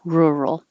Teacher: This can sound like her, rural, or like hook, rural, but it will never sound like ooh, rural. So don't round your lips too much.